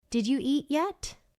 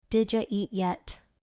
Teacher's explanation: Native speakers connect the words. So did you becomes did ya.